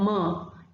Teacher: up behind the closer secondly the consonant sounds like ma is produced by bringing both the lips together and allowing the air to escape through the nose